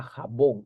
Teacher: la mayor fuerza de voz la sílaba tónica se encuentra bón